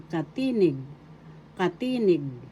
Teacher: Second syllable tired syllable nig. The accent is on the second syllable